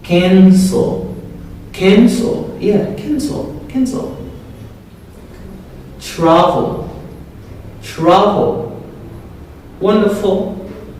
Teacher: L at the end of a word, it is pronounced as O.